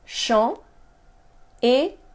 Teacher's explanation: Notice I don't pronounce the S at the end.